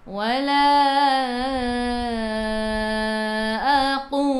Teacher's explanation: Matikan dengan huruf lam, hujung lidah menyentuh gusi atas.